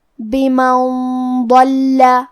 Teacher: حرف الضاد کی ادائیگی زبان کے کروٹ اور اوپر کے داڑھوں کے جڑ سے ہے. ہمیں حرف الضاد کو موٹی آواز میں بھی پڑھنا ہے، کیونکہ لام پہ تشدید ہے تو ہم تشدید کو ظاہر کریں گے.